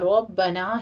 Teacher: را مفخم پڑھتے ہوئے باقی تشدید ادا کیجیے